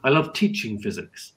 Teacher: I love teaching physics and I stress teaching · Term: sentence stress